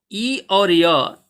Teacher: ई और य इन दोनों का उच्चारण स्थान तालु है